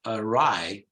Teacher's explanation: It begins with a schwa, awry, both in English and American English, awry.